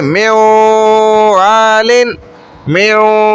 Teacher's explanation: نون کی بھی ہلکی سی آواز ہے، واو کی بھی آ رہی ہے صاف · نون کو واو میں داخل کر دیا. مین نون ساکن تھا، اس کے بعد حروف یرملون جو 6 حروف ہے اس میں سے واو آ گیا تو ہم نے داخل کر دیا، ادغام کر دیا.